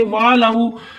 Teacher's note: یہ واو لین ہے، واو ساکن اس سے پہلے زبر واو لین تو نرمی کے ساتھ ادا کریں گے